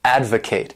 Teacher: this word has 3 syllables and the stress is on that first syllable